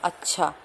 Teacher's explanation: अल्प प्राण है क्योंकि च का उच्चारण करते समय हवा कम निकलती है